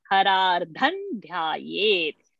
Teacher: dha is in tavarga, ta tha dha dha na, so anuswara becomes na, harar dhan dhyayet.